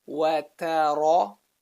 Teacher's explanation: Notice the movement from light letter to heavy letter back to light.